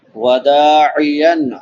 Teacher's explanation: عین وسط حلق سے